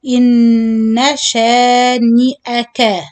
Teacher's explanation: So إن, you add extra mad here. We said do the gunna on the noon second, but the noon fatha, don't stretch it.